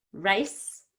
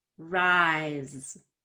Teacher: So the rice is an S sound, and the rise looks like an S, but it's a Z sound.